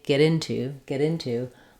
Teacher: link these together and as I say get into get into my T becomes more of a D sound it becomes a flap so naturally words that end with t when the next word